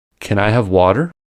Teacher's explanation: To sound right to American ear, we need to use an allophone of t, called flap T, where voiceless /t/ is pronounced as a voiced alveolar flap [ɾ]